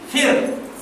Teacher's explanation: Tahu tak Allah Subhanahu Ra pada kalimah Fir'aun. Kalau ikut hukum Ra mati sebelum dia bagi bawah, Ra tu akan dibaca nipis.